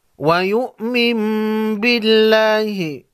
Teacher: علامت کے طور پر چھوٹا سا میم لگا ہوا ہوتا ہے، نون ساکن کے نون کو میم میں بدل کر غنہ کے ساتھ پڑھتے ہیں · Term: اقلاب